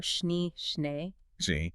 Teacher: The long E is a pure sound, kind of like the start of the English I in say, but hold it without gliding into the Y sound. Yeah. Keep the lips fairly close, tongue resting low, like an air on a schnee, schnee.